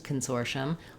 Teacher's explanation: I've written that here for you actually with no vowel because when I say consortium, or when anyone says consortium, we don't really do consortium. We're very short and reduced on that first syllable. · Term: reduced vowel